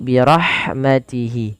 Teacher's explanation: Wallahu yakhtassu birahha, di lafal ha alirkan, birahmatihi, hati-hati jangan baca dengan huruf ha besar, dengan birahmatihi, tapi birahmatihi. Pada lafal hi panjangkan dia 2 harakat karena ada mad silah qasirah.